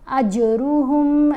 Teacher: جیم کے اوپر کلکلا ہے، جیم کی آواز کو ہلا کر پڑھا جائے گا۔